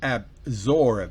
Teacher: To absorb, vean que es con W, es bilabial. Absorb, no es absorb, no es labio dental, sino bilabial. Absorb, ba, explosivo, bilabial.